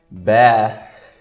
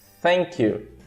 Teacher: muita gente pronuncia com som de T ou som de F, não façam isso, dá problema. É só você tirar a vibração.